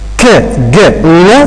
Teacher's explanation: K, g, n are velar sounds because we raise the back of tongue towards the soft palate or the velum